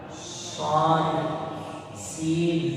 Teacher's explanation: Shad sama, makhrajnya sama. Cuman posisi mulut itu menjunjung. Kenapa? Karena disebabkan shad itu memiliki sifat as-shafir, yaitu bersiulnya suara. Shad, sin. Jadi perbedaan menjunjung dan senyum itu menentukan kualitas makhraj yang kita baca.